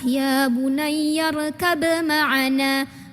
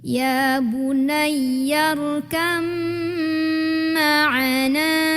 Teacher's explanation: Karena ini kebetulan mim, huruf depannya mim itu punya sifat dengung, maka selain ditekan juga ditahan, didengungkan. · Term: idgham mutajanisain